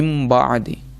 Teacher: نون ساکن کو ہم نے میم میں بدل دیا ہے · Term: اقلاب